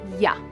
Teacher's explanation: Oftentimes we teach Y as ya, but listen to that. Ya adds the schwa. When I say yellow, I do not hear a after yellow.